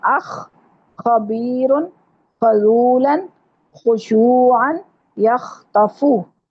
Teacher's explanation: ख जो है वो गले की खराश के साथ अदा होगा